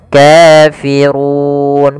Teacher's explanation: Kemudian kafirun pada lafal ru di sini ro tebal yaitu r tafkhim. Rnya dibaca dengan tebal. Kemudian pada lafal run itu ada bacaan mad arid lukun.